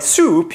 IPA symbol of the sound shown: u